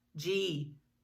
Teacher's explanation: oh yes that's for sure voiced you feel that buzzing feeling that's that voice box moving